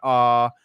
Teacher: a comes from the back of your throat